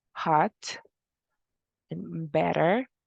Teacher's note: It is a voiceless alveolar stop.